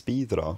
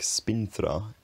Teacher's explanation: If you have a vowel, then a nasal consonant like n, then a fricative like th or the nasal disappears and the vowel lengthens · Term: Anglo-Frisian nasal spirant law